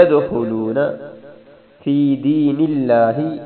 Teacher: دال پر کلکلہ ہے، خا موٹا کرنا ہے